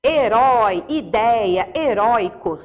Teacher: Quando é assim, ó, herói, ideia, heróico, né? Repara que o som é forte, o som é aberto. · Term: som aberto